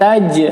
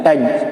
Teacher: qalqalah sughra dipantulkan